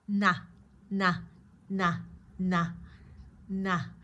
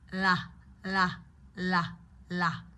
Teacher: So you can use almost the whole front part of your tongue to create that N.